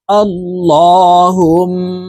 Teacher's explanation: ওয়াজিব গুন্নাহ হরকতের বামে মিমের উপরে তাসদিদ আছে এই কারণে ইহা তাশদিদ ওয়ালা মিমের সাথে নাকের পাশে থেকে গুন্নাহ করে পড়বো